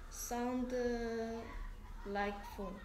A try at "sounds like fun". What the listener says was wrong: Sounds like fun. Sound가 아니고 D, 뒤에 S가 있으니까 sounds like fun.